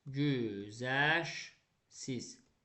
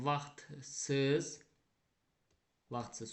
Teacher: Sonu Xt ilə bitən sözümüzə samitlə başlayan şəkilçi artırdım. Yenə də t düşəcək. Vaxt tələffüz olacaq.